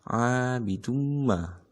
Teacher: Abidumma itu tanwin bertemu dengan huruf mim, harus dimasukkan ke dalam huruf mimnya. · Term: idgham bigunah